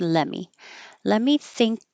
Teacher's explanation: let me always gets pushed together and the T just disappears